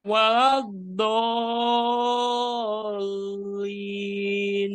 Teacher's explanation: Do-nya kurang panjang. Do-nya 6 harokat ya kalau dari kaidah